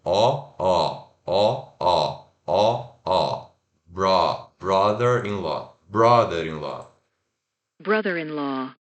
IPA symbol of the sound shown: ʌ